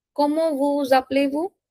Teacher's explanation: There is a linking sound between S and A.